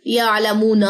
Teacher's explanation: یعلمون, یہاں پہ غلطی اکثر ہوتی ہے کہ نون کی زبر اسٹوڈنٹس جو ہے وہ لمبی کر دیتے ہیں, یہ چیز نہیں کرنی. یعلمون ما لمبا ہوگا.